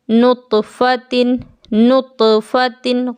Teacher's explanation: غور کریں تا پر میری آواز لوٹ رہی ہے، نطفتن، کیونکہ تا حروف قلقلہ ہے، جیم حروف قلقلہ ہے۔